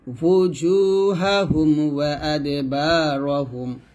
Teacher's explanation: ওয়াও উচ্চারণ করার সময় যেন হামজার মতো ও না হয়ে যায় দুই ঠোঁট গোল করে উচ্চারণ করবেন